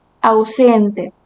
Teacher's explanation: Vemos en una sola sílaba la unión de la vocal A con la vocal U. Vocal abierta, vocal cerrada forman dictongo.